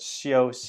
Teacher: it's not SH and it's not s it's more like in-between